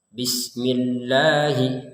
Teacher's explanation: Pada lafal Allah ini kita harus membacanya dua harakat.